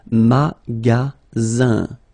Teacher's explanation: Then you get the sound Z, alright? And then the ending here is IN, so it's nasal, it goes in your nose, and it's un.